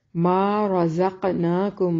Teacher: را اس کو موٹا پڑھیں گے، را ہمیشہ حالت فتحہ اور دمہ میں موٹی پڑھی جاتی ہے